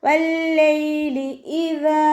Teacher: ദാലിൻ്റെ കൂടെ അലിഫ് മദ് വന്നു. 2 കൗണ്ട് നീട്ടിക്കൊടുക്കുക.